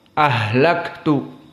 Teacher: Maka Hamzah di sini muraqaqoh